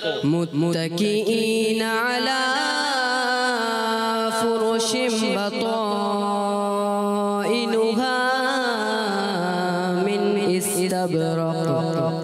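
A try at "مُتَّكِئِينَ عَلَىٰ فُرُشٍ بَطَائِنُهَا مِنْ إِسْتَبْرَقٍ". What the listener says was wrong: अच्छा, आपने उर्फ़े मद्दा को ज़्यादा खींच दिया और फुरुशिम यहाँ गुन्ना करना है। इसको गुन्ना दोबारा सुने। मुत्तकीईन अला फुरुशिन बताइनुहा मिन इस्तबरक़। बच्चों और मदनी चैनल के नाज़रीन, इस चीज़ का ख़ास ख्याल रखना है कि हुरूफ़ मद्दा जो होते हैं ना, उनको एक अलिफ खींचना है, ज़्यादा नहीं खींचना।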